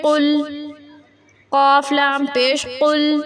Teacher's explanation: موٹا قاف ہے یہ، قل، کل نہیں